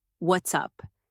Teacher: The rhythm goes up at the end, almost like you're singing.